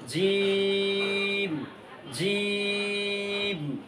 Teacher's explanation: জিমের উচ্চারণ হবে জিহ্বার মাঝখান, তালুর মাঝখান একটু শক্ত আওয়াজে 3 আলিফ করে টান দিব আমরা।